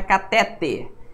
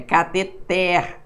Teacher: A pronúncia correta é uma palavra oxítona, não tem acento, né?